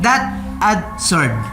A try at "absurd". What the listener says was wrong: Say it again with a B. Absurd. Make it like that. With a B, with a B. Absurd.